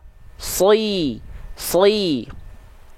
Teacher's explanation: huruf Shad Itu adalah huruf yang tebal maka ketika berharakat kasrah nya tetap direndahkan rahang bawahnya tapi tanpa senyum